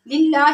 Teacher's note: لفظ اللہ کو ہم نے باریک پڑھنے کیونکہ اس سے پہلے زیر لفظ اللہ کے لام سے پہلے زیر آ رہی ہے